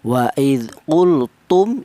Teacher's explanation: Adapun syafawi itu artinya huruf mem ini keluarnya huruf berasal dari bibir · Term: idhar syafawi